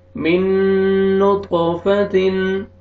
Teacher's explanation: تو یہاں پہ ادغام کریں گے غنہ کے ساتھ. آگے طا پہ قلقلہ ہے، ڈبل ساؤنڈ آئے گا طا کا